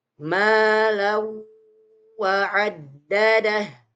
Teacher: terakhir ketika ada tanwin bertemu dengan huruf wau maka dibaca dengan meleburkan suara huruf tanwinnya ke dalam suara huruf wau